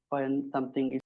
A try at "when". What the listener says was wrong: Again, also has this Bangladeshi accent with the when, right? So when in at least received pronunciation standard British English doesn't have the h sound. So it's not when, but when. Just when, why, where, when, why, where. Not when, where, but just when, why, where.